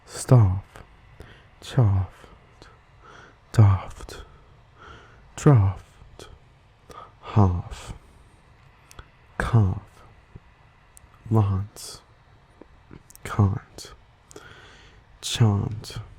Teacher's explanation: the trap bath split is an interesting different pronunciation often seen in British English